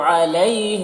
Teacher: علی میں یا لین ہے، اسے نرم آواز کے ساتھ جلد پڑھیں گے۔